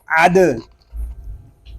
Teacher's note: عین دال زبر عد، اس کو عد نہیں پڑھیں گے، دال ساکن ہے، اس میں کلکلہ خوب ظاہر کریں گے